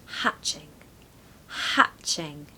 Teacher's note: It's a short A, so hatching, hatching. Okay, you really want that back of the throat sound, the short A, hatching. Stress the first syllable.